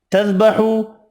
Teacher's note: واو مدہ ایک الف کی مقدار میں کھینچ کر پڑھیں گے